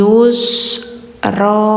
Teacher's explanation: Bacanya jangan ron ya, karena di sini kita mau berhenti ya.